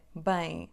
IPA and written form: bɐ̃j̃ (bem)